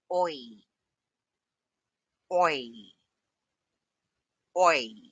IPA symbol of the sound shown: ɔɪ